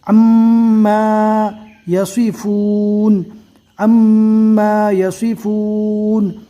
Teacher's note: میم مشدد کا گنہ ہوگا